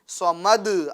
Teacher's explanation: احد آواز مخرج میں رکے گی نہیں، آواز لوٹ کر آئے گی